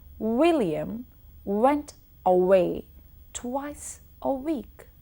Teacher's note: I was rounding my lips I'm bringing them forward every time I had to pronounce what these are few examples